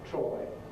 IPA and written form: trɒɪ (try)